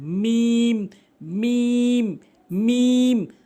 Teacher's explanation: দুই ঠোঁটের আপনি শুকনো অংশটি মিলিত করবেন